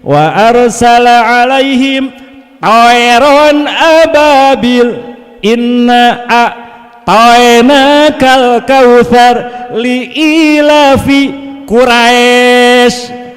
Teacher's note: ya mati sebelumnya fathah cenderung ke suara e